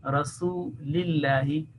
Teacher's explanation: So it will be Rasulillahi, not Rasulillahi, not thickening that, but you will be thinning the lam mushaddad. Fi Rasulillahi, simply as you are a little smiling. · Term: thin sound